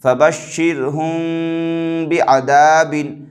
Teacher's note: رائے ساکن سے پہلے زیر آ رہا ہے تو اس رائے ساکن کو باریک کریں گے، باریک کر کے پڑھیں گے، فَبَشِّرْهُمْ بِعَذَابٍ۔